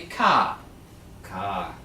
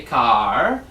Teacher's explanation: Now a lot of American people do pronounce the R, but in England and Australia we don't.